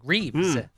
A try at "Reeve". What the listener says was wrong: Reeve singular, interestingly.